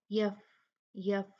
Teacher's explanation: فا کی جو ہمس کوالٹی ہے، اس کی ایک صفت ہے، اس میں ہوا ہوتی ہے، اس کو ہم نے واضح کرنا ہے. یف یف اتنا نہیں، یف بہت ہی زیادہ نہیں جتنا اس کی طبیعت میں ہمس ہے.